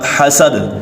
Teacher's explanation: یہاں دال کے اوپر قلقلہ ہوگا کیونکہ پیچھے ہم نے سنا ہے کہ حروف قلقلہ 5 ہیں، قاف، طا، با، جیم اور دال، تو یہاں یہ بھی دال ہے، دال کے اوپر بھی قلقلہ ہوگا۔